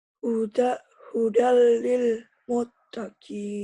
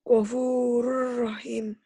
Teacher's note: Jadi idgham itu tulisan dan bacaan berbeda. Ditulisnya ada bunyi N-nya, dibacanya bunyi N-nya hilang. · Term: Idgham bila guna